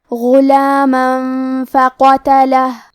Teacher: آخری میں میم پہ تنوین زبر ہے، پھر حرف الفاء آتا ہے. کلمت فقتلہ فا حروف الاخفاء میں سے ہے تو ہم یہ حکم کو غنہ کے ساتھ ادا کریں گے